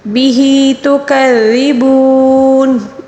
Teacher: واو مدہ کو 3 الف کے برابر کھینچ کر پڑھیں گے